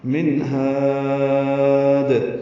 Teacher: ہا کو لمبا کریں گے اور دال ساکن پہ قلقلہ کریں گے